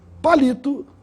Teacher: a palavra palito tem a sílaba mais forte na penúltima sílaba no li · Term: paroxítona